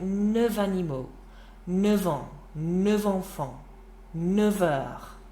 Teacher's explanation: when you say it with a vowel afterwards, like animaux, if you want to say 9 animals, that F sound changes to a harder V sound